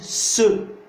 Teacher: Mais quand vous dites ce, vous sentez que l'apex ne touche pas les dents. Ce, il touche derrière et un peu en haut. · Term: alvéoles